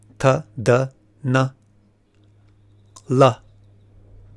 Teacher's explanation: Those are your tooth, dental varga.